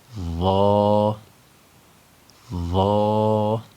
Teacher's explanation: بغیر سیٹی کی آواز پیدا کیے ہوئے اس کو پڑھیں گے اور اس کو ہمیشہ موٹا پڑھیں گے